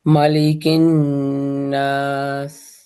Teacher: کاف میں جو ہے وہ قاف کے مخرج سے تھوڑا سا آگے